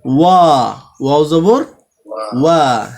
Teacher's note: লাস্টে আর মুখ গোল করতে হবে না, শুধু শুরুতে মুখ গোল থাকবে।